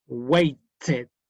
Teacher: Id, porque termina en un sonido T.